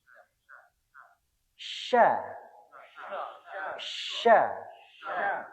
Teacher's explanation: Banyak sekali nafas yang keluar. · Jadi lidahnya kita ini menempel di langit-langit itu yang tengah. Jadi naik terus nempel di langit-langit. Jadi sya. Bukan yang ujung ya. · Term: syin, shin